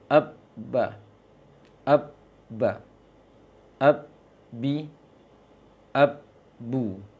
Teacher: Yang berikutnya makhraj ba. Ba dua bibir. Hanya saja ba ditekan kuat. Ba ditahan, ditekan kuat dia.